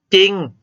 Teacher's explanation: เวลาออกเสียงออกเสียงพยัญชนะตัวหน้าคือจอดจานเท่านั้นนะครับ